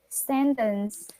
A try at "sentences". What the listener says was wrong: It has letter S at the end. Sentences. Okay, so don't forget to emphasize the letter S when you read them.